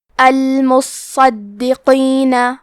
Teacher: قاف کی ادائیگی زبان کے جڑ اور تالو کے نرم حصے سے ہے. قاف حروف التفخیم میں سے ہے تو ہم یہ حرف کو موٹی آواز میں پڑھیں گے · کلمت المصدقین میں حرف صاد پہ تشدید ہے تو ہمیں 2 حرف کے برابر صاد کو پڑھنا ہے. صاد حروف التفخیم میں سے ہے تو ہم یہ حرف کو موٹی آواز میں بھی پڑھیں گے. حرف دال پہ تشدید ہے تو ہم دال کو بھی تشدید سے پڑھیں گے.